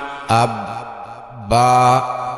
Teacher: আব বা শক্ত, শ্বাস বন্ধ থাকবে